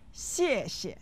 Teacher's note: said with the fourth tone on the first syllable and the neutral tone on the second